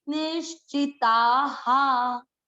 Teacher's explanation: ता आ की मात्रा है तो विसर्ग को पढ़ेंगे हा। अगर यहाँ पर ई की मात्रा होती तो इसको पढ़ते ही।